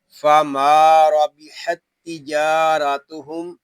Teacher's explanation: را کو ہم پر پڑھیں گے کیونکہ را کے اوپر زبر آ گیا ہے · میم کو ایک الف تک کھینچ کر پڑھیں گے کیونکہ یہاں الف مدہ ہو رہا ہے